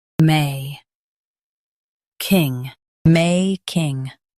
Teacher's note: Stress may and keep king light.